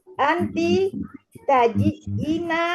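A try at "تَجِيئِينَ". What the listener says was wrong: Panjangin Bu, taji'ina. Panjang ada ya sukun juga.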